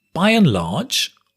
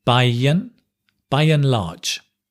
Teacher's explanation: By and large, and becomes un,